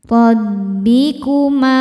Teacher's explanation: Ro dibaca tafkhim karena berharokat fathah. Cara bacanya ditebalkan. Rabbikuma. Ma hukumnya mad tabi'i dhahiri karena ada alif didahului harokat fathah.